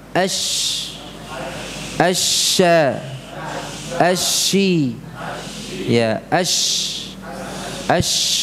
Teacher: shin ini juga diucapkan tanpa mencucu bibirnya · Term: huruf shin